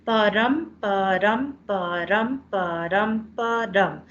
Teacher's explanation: five stressed and five unstressed syllables so it sounds exactly like a heartbeat